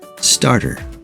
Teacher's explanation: the t is in between an r and a vowel and it's also in an unstressed syllable of that word so it gets a flap t